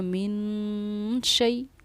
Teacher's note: نون ساکن کے بعد اگر حروف اخفا میں سے کوئی حروف آئے جو کہ شین حروف اخفا میں سے ہے تو نون پر ہم اخفا کرتے ہیں. اسی لیے ایک ٹھہراؤ ہم نے یہاں کیا من شیء.